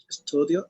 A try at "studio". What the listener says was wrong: Exactly.